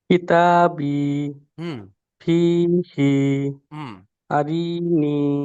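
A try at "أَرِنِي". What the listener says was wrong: না আর র টান দিলে হবে না র নিচে আছে হারাকা তাড়াতাড়ি পড়তে হবে রকে তাড়াতাড়ি পড়তে হবে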